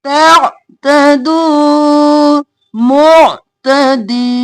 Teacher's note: आइन गले के दरमियान से हिलाना नहीं है, साकिन रखना है।